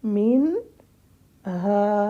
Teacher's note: مِنَ الْحِجَارَةِ لَمَا يَتَفَجَّرُ مِنْهُ الْأَنْهَارُ، آگے پھر وَإِنَّ مِنْهَا، اب ہا کو الف ہے ساتھ تو الف کا ٹائم ہم نے دینا ہے